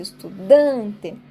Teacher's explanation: estudante estudante ou seja de trás pra frente última sílaba T penúltima sílaba Dan e é o Dan que eu enfatizo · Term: paroxítono